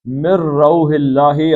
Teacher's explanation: اللہ کا لام پتلا کیونکہ پیچھے زیر آ گئی ہے